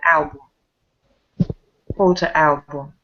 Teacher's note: album are the stresses on the first syllable